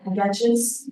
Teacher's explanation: s is actually very hard to combine with the ch sound, so you put a little vowel in there to make it easier to say